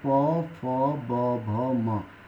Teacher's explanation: आप कोई भी वर्ण बिना ओठ आपस में लगाए नहीं उच्चारण कर सकते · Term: ओट